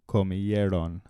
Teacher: the accent is on the second to last syllable